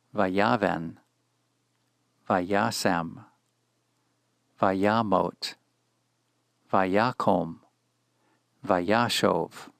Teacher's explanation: the accent has moved one syllable closer to the beginning of the word. It lands on the penultimate syllable.